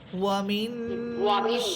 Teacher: এখানে ওয়ামিন ওয়াও হরফটা ঠোঁট গোল করে পড়বেন